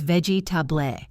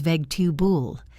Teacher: A native speaker says vegetaboul. 3 syllables, and the middle one is a schwa.